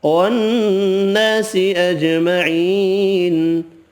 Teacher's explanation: نون مشدد پر غنہ کریں گے، الف مدہ ایک الف کی مقدار میں کھینچ کر پڑھیں گے، جیم ساکن پر قلقلہ کریں گے، یا مدہ ایک الف کی مقدار میں کھینچ کر پڑھنا ہے، نون ساکن پڑھنا ہے وقف کی صورت میں۔